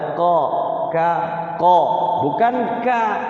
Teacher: huruf yang letak-letaknya itu berdekatan banget nah termasuk ini ka sama qo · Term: mutaqariban